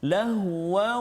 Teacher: tanwin bertemu dengan waw. Jadi bunyi tanwin tu masuk dalam waw. Lahu berserta dengan dengung, dua harakat. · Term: idgham bi gunnah